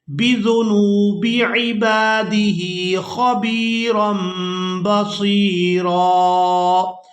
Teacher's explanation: تنوین میں نون کی آواز کو ہم نے میم کے ساتھ بدل دیا ہے، اور اس کی وجہ یہ ہے کہ تنوین کے فوراً بعد با آ گئی ہے، تو یہاں پر ہم نے نون کی آواز کو میم کے ساتھ بدل کر ادا کرنا ہے، اور اسے اقلاب بھی کہتے ہیں۔